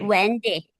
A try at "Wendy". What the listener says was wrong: Wendy, good.